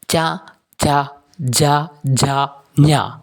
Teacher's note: അണ്ണാക്കിന്റെ സഹായത്തോടെയാണ് നമ്മൾ ഇത്തരം അക്ഷരങ്ങൾ ഉച്ചരിക്കുന്നത് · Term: താലവ്യം